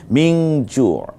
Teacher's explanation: আত, খেয়াল করুন, আত আত মা হুম মিং জু মিং মিং জু, নুনের পরে জিম এসেছে, নুন সাকিন অর্থাৎ যজমালা নুন, এজন্য আমরা মিন জু ময়রস্যি ন মিন যজমালা মানে হসন্ত দিয়ে মিন না বলে মিং নাকের মধ্যে নিয়ে নটাকে নিয়ে যাব, মিং জু। এটা হচ্ছে ইকফার কাজ।